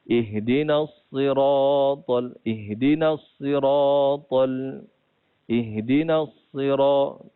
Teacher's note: Jadi tidak boleh kita muncungkan bibir pada huruf sad. Kena baca macam biasa je lah.